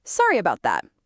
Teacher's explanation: with my voice going down, it sounds a bit heavy